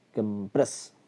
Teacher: എന്നാൽ അത് വേർബാകുമ്പം കംപ്രസ്, പ്രസ് എന്ന് പറഞ്ഞാൽ രണ്ടാമത്തെ സിലബിൾ പ് എന്ന സൗണ്ടിനാണ് സ്ട്രെസ് വരിക